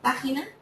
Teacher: tienen el acento en la antepenúltima sílaba es decir en la tercera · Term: esdrújulas